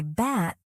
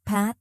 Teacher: Both are made with your lips closed, but P has a stronger burst of air.